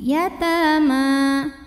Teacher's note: di sini hukumnya Mad thi'i karena ada Alif sebelumnya baris fathah alifnya alif bengkok atau Alif maksurah dibacanya panjang dua harakat